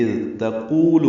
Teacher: اذ تقول میں تا باریک ہے، قوف پر ہے، قو واو مدہ ہے، دو حرکات لمبا کریں گے